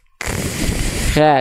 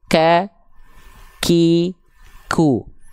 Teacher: suaranya ketika dia punya sifat hams yang harusnya mengalir napas tapi karena tertahan suaranya si nafas jadi ikut agak tertahan jadi Hanya berupa percikan nafas saja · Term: syiddah